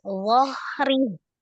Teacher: Cuma ditebalkan, jadi tidak dipanjangkan, tapi zohri.